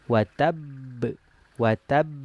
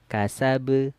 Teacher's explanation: ba yang pertama sukun yang kedua baru berharakat maka dia di sini ada sedikit penekanan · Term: Qalqalah Akbar